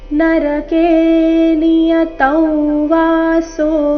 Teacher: ಮುಂದಿನ ಶಬ್ದ ವಾಸೋ ವಾ ಅಕ್ಷರದಿಂದ ಪ್ರಾರಂಭವಾದ ಕಾರಣ ಅದಕ್ಕಿಂತ ಮೊದಲು ಬಂದ ಅನುಸ್ವಾರದ ಉಚ್ಚಾರಣೆ ಸಹ ನಾಸಿಕ ವ ಬರಬೇಕು.